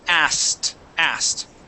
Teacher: we're going to skip over that k sound and go right to the T